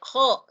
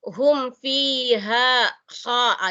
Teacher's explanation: Padahal sebenarnya hum fiha kha. Jadi kha-nya di sini antara O dan A, tapi bukan jelas O. Jadi sebenarnya H.